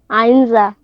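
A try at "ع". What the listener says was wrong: মাশাআল্লাহ, সুন্দর হয়েছে।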